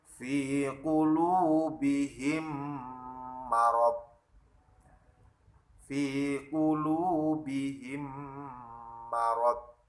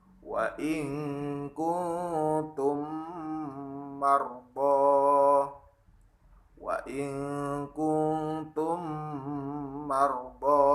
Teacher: Nah, ada mim sukun bertemu dengan mim. Cara membacanya adalah meleburkan atau memasukkan huruf mim pertama ke huruf mim yang kedua. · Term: idgham mimi